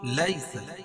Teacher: لیس علیک ہداہم ولکن اللہ، لیس یعلین ہے، یا ساکن سے پہلے زبر ہو تو یعلین ہوتا ہے، اس کو نرم آواز کے ساتھ جلدی ادا کریں گے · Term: یا لین